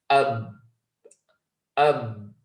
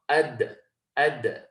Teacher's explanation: So in reciting these letters, the sound comes to a complete stop. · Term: shidda